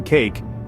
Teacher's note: The long A, as in cake, is a 2-part vowel sound, starting with short E and sliding into long E.